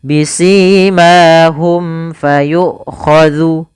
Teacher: Kemudian pada lafal bisimahum fayukhadhu, ada mim mati bertemu dengan huruf fa, maka ini kita namakan dengan bacaan izhar syafawi, yaitu suara huruf mim dibaca dengan jelas